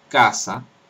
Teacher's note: tenemos una velar sorda implosiva como en casa